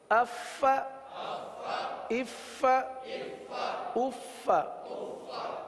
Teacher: فا کی یہ آواز سانس والی آواز یہ ظاہر ہونی چاہیے